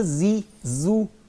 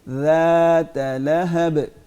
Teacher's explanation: اس کو ہم نے زا نہیں بولنا, اس کو ذا نرمی کے ساتھ بولیں گے بغیر سیٹی کے.